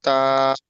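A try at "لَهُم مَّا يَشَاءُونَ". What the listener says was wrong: তা নয়, শিন শিন, ইয়াশা ইয়াশা, লাহুম মা ইয়াশা উনা উ হুম, লাহুম মা ইয়াশা যাই হোক, মূলত এখানে কায়দাটা তাহলে কি হলো, এখানে গণনা করার যে মিম সাইনের পরে মিম আসে ওই জন্য।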